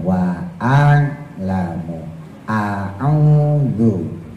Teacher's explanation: Jadi yang dibaca hamzahnya dulu, a baru ditekan